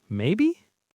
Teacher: the intonation went up on every single question, even on the word maybe at the end